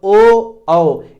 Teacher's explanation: ओ औ ये कंठोष्ठ हैं, ये कंठ और ओठ दोनों से बोले जाएंगे, इसीलिए इन्हें कंठोष्ठ स्वर कहेंगे, और इनकी संख्या 2 हो जाएगी।